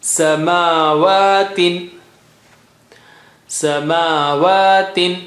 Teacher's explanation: Ma and waw, mim and waw both have standing fatha. You got to give equal stretch for both.